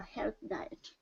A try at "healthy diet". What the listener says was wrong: Okay, so remember this, healthy. So remember to pronounce the E part.